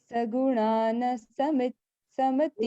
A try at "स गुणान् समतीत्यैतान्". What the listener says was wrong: You don't pronounce na fully, it is half na. Sagunan samadityetan.